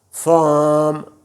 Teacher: یہ آر نہیں بولنا آپ کو، رے والا لفظ آخری بولنا ہی نہیں ہے